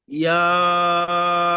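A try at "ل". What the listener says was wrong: ইয়া নয়, লাম, লাম, লাম,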